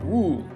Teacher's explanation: So that's wu, which means 5, and wu it's the falling and then rising tone